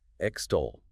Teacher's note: Stress on the second syllable, stole. 2 syllables.